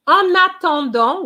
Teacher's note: i am linking the n with the a